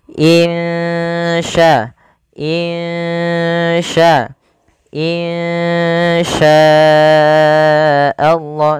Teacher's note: Cara membacanya, samarkan suara nunnya kepada huruf sya. Insya, insya, insya Allah, sambil ditahan 2 harakat. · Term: ikhfa hakiki